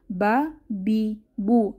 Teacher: দুই ঠোঁটের ভিজা জায়গা থেকে বা উচ্চারিত হয়। বা জবর বা, বা জের বি, বা পেশ বু, বা বি বু।